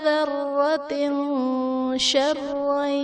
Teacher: تنوین کے بعد حروف اخفا میں سے شین ہے تو یہاں پر اخفا کا غنہ کریں گے